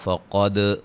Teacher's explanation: قاف کو موٹا، دال پہ قلقلہ